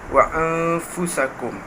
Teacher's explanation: Apabila nun mati bertemu dengan fa, dengung 2 harakat. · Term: ikhfa' hakiki